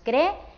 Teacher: como son dos vocales fuertes, forman un hiato, así que se tienen que decir, que pronunciar en dos sílabas diferentes.